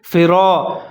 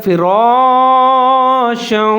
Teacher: را کے اوپر زبر ہے، اس کو آپ نے موٹا پڑھنا ہے